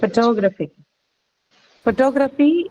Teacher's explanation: T is not aspirated.